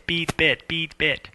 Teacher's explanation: you don't have to change your lips or your jaw at all what's going on is like there's a different tongue position and a different you know your throat is actually more closed